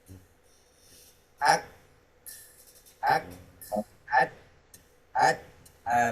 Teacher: Itu kembarannya adalah huruf ta ya. Huruf kaf yang sukun, kembarnya adalah huruf ta, sama. Mempunyai sifat dah, kemudian hamz. Tertahannya suara, kemudian mengalir tertahannya suara dan keluarnya nafas ya.